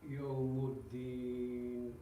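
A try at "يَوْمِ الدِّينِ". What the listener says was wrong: I can't hear the third. One more, a bit more. Yawmuddin. Yawmuddin. That's what you need to do. Yawmuddin. Very, 1/3 of the kasra. Because a whole kasra would be Yawmuddini. Yawmuddini. But I don't want to read too much and I don't want to read too less. If it's too less, it becomes a sukun. Not Yawmuddin, not Yawmuddini. Yawmuddini.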